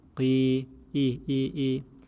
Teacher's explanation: Kasra keeps its normal shape, which means there's no hint of heaviness in kasra